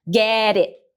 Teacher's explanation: o T tá articulado aqui na tua língua, como se você fosse fazer o T, mas você não explode ele.